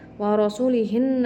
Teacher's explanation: rnya dihukumi dengan bacaan tafhim tebal karena rnya berharakat fathah